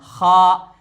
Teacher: ये खा, और ये आखिर हलक से निकलता है